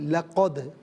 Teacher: قاف اس کو پر کر کے پڑھیں گے، دو نقطوں والا جو قاف ہے نا اسے پر پڑھتے ہیں. دوسرا لقد میں آخر میں دال ساکن ہے، چونکہ حرف قلقلہ ہے تو اس کو ساکن تو پڑھیں گے لیکن یعنی آواز لوٹتی بھی محسوس ہو.